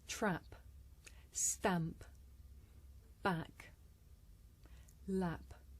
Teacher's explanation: we know it is short is it close or open it is open and it is front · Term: fourth front vowel